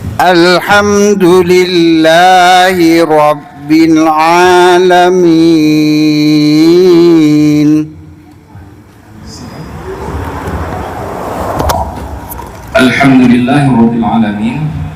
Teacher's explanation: Alif wasal lam ha mim sudah, dal ujung lidah dengan pangkal gigi seri atas, lam ha wa ba alif wasal lam sudah di belakang, ain huruf di tengah tenggorokan, lam mim ya nun sudah di belakang.